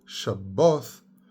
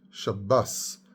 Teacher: at some point in Europe, in Ashkenaz, the th becomes s. It hardens a little bit more, and instead of a th sound, like Shabboth, it becomes Shabbos, and then Shabbos.